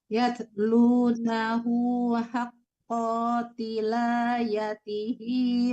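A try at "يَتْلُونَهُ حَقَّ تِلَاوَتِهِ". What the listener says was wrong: Boleh Ibu berarti haqqa tilawati. Lanya panjang ya Bu, jangan wanya yang dipanjang. Yatlunahu haqqa tilawati.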